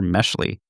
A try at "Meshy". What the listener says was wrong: Oh, you keep pronouncing it Meshley. It's Meshy.